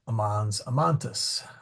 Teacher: I take the vowel which is a long a because this is first conjugation